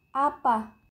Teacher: vokal a rendah pusat tak bundar